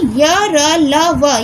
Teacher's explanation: अंतस्थ का अर्थ है बीच में स्थित होना, यानी य, र, ल, व ये चार व्यंजन अंतस्थ व्यंजन है। इनका उच्चारण स्वरों और व्यंजनों के मध्य का होता है, इसलिए इसे अंतस्थ व्यंजन कहते हैं।